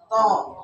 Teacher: Huruf to juga harus tebal. To. Lidahnya nih ke atas.